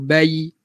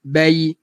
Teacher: Ya lin. Sampaikan huruf ya. Habiskan ya tu.